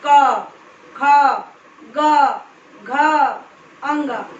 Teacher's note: तो कवर्ग जो होगा उसका उच्चारण स्थान जो होगा वो होगा कंठ, जिसको कंठ्य बोलते हैं।